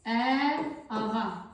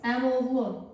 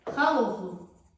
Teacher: Bu sözlərin tələffüzündə mürəkkəb sözlərin qovuşağında olan birinci saitin düşmə hadisəsini görürük.